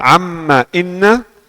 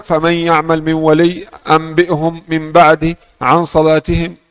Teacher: suara yang keluar dari hidung di amma dan inna lebih kuat dari suara yang keluar dari hidung di kata faman ya'mal min wali anbi'hum min ba'di an salatihim, lebih kuat.